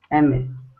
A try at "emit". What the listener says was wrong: More like an I. Emit.